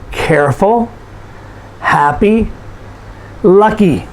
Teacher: So these are adjectives, and you'll notice that we stress the first syllable.